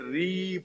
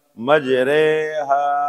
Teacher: را کو مجھول پڑھنا ہے ورنہ را کھڑی زیر ری پڑھتے ہیں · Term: امالہ